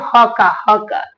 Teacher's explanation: ह को स्वर यंत्र यानी कंठ के भीतर से इसका उच्चारण होता है